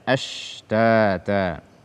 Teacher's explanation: membaca shin tanpa tafasyi atau menggantinya dengan sin